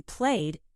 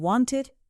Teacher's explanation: For example, the ed ending sounds different in different words. In walked, it sounds like T. In played, it sounds like D. In wanted, it sounds like id.